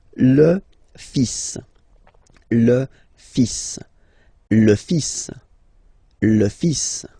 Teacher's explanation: So it's le, and then even if you've got this L, well, basically you don't pronounce it, and then strangely you pronounce the final S.